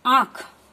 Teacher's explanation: मुख खुला हो रहा है और नाक द्वारा कोमलता से इसका उच्चारण हो रहा है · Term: चंद्र बिंदु